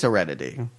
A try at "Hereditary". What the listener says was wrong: Hereditary. There's an R in it.